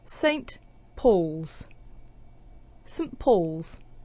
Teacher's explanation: instead of saying saint with a strong pronunciation, we're using the weak form, sunt, and then we have a n sound and a t sound and the p sound at the beginning of Paul's.